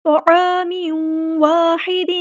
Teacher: میم کی دو زیر کو واو کے اندر مکس اپ کر دیں گے، مدغم ہو جائے گی، ادغام ہوگا، ادغام مع الغنہ